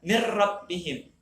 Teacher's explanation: Seolah-olah ro itu mirro, kita nyebut ro, mir rabbihim, nunnya hilang, sembunyi nun dari itu nama idgham, tapi tidak berdengung. Bila gunnah, idgham yang tidak berdengung